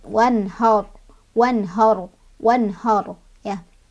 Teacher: Ro-nya dibaca tebal atau tebal itu bunyi huruf seolah-olah bunyinya tersebut memenuhi semua rongga mulut. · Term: tafkhim